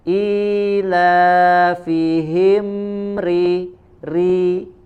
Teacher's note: Kemudian ada huruf mim sukun, ya, setelahnya huruf ra maka mim dibaca jelas, izhar. Ilafihim ri, ya, ada huruf ra, ya, huruf ra dibaca dengan tipis di sini karena harokatnya kasroh, ya.